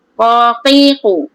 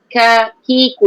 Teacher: Okey, dia berbeza dengan kakiku, depan sikit. Ko tu betul-betul pangkal lidah. Tekan ke anak tekak. Tekan sikit ataupun ke langit-langit keras.